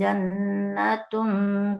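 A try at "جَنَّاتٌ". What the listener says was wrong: Ya, perhatikan tadi di jannah. Bunda perhatikan di atas. Jannah. Nanya panjang tidak? Panjang nanya. Nanya panjang. panjangin nak. Yang penting diperhatikan di nunnya dibaca panjang. Jannatun.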